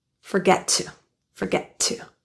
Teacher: The T at the end of forget is pronounced as a glottal T sound. So it's unreleased and it's kind of linking to the next word to.